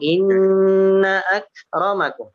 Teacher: dari huruf nun itu tidak dipanjangkan ke huruf hamzah. Langsung.